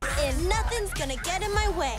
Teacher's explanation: the T in the word get is pronounced as a flap T, which then connects to the preposition in